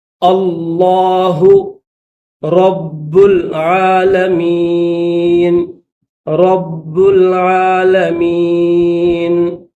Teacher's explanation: تو یہاں پر لفظ اللہ سے پہلے زبر ہے، اس وجہ سے اس کو موٹا کر کے پڑھیں گے